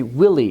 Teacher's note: we should have a clear stress on the first syllable and the second syllable is light